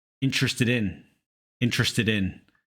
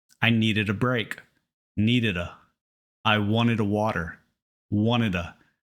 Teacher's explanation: when words with that ID sound like needed or wanted are followed by a vowel the D turns into that fast D